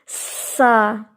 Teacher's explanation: لیکن اگر آپ درست مخرج کے ساتھ نہیں پروناؤنس کریں گے، زبان اندر رکھ کے پڑھیں گے، تو پھر یہ آواز آئے گی سا، اور اس میں سانس کا تھرو آپ کو اپنے ہاتھ پر محسوس ہوگا. تو آپ کو پتہ چل جائے گا کہ یہ رانگ ہے.